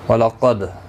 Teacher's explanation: قاف حروف مستعلیہ ہے، دال ساکن پر قلقلہ ہوگا